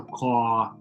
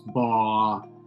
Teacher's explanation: another one which is stereotypical is the dropping of the r after the after a vowel